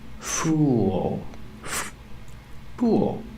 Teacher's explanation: use the dark L at the end link The Sounds ooh with the dark dark L it makes · with the dark dark L it makes an extra sound